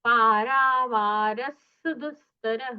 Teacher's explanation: विसर्ग का आगे जब सकार आता है तो विसर्ग का सकार हो जाता है इसलिए पारावारस दुस्तः सुतरोयं यहां पर सुतरोयं ऐसा उच्चारण नहीं करना